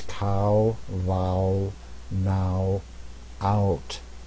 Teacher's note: as you're doing it your lips get round and your jaw comes up so you go ow ow ow and so here's cow vow